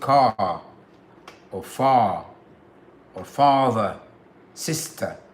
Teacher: r for example the word car or far or father sister you don't pronounce the r